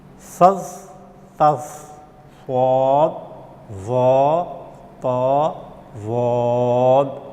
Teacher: ان حروف کی ادا کرتے وقت زبان کا بیچ جڑ اوپر کے تالو سے ملحق ہو جاتا ہے، یعنی لپٹ جاتا ہے۔ ایسے حروف 4 ہیں۔ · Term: مطبقہ